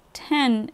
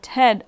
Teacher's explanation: for example example the vowels in 10 and Ted are different one is nasalized and the other is not